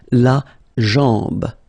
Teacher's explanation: Okay, remember, AM, when you combine these two, basically it's just like AN, so it's nasal and it's en